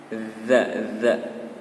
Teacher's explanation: Kalau huruf za itu lidahnya, cara pengucapannya lidahnya sedikit keluar dan ditempelkan ke gigi atas.